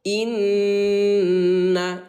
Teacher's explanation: Inna, tahan dulu 2 ketukan bun ya. Jadi bukan dibaca ina tetapi inna.